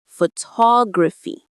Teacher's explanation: The stress falls right on that second syllable, ta.